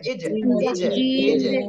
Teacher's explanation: এর উচ্চারণের স্থানে যেয়ে আটকায় রেখে দিছি ইল ইল এরপরে ইজ জিমটা কলকলা এজন্য ধাক্কা দিচ্ছি